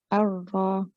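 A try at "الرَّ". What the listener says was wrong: The second Ra is better than the first. Your joining one is a little bit weak. So as soon as you join, you say Ar, straight away you should be heavy. Ar, you're getting ready for a heavy Ra. Ar-Ra.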